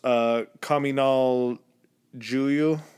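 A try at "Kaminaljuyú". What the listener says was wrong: I would say Huyu because the J is usually not pronounced.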